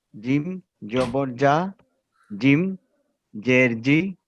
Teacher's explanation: এবার জিম জিহ্বার মাঝখান থেকে। জিম জি অক্ষর শক্তভাবে পড়তে হয়।